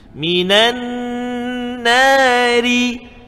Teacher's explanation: Sebab di atas nun ada sabdu wajibal gunnah dua harakat.